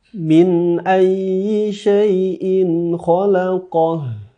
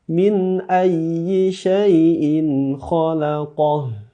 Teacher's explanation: Berikan penekanan karena ada tasydid pada huruf ya-nya.